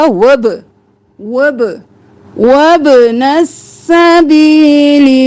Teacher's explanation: वब्नस नहीं करना, बा को कलकला